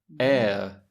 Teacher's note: It's got two monophthongs. It contains the /e/ and the /ə/. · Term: diphthong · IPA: /eə/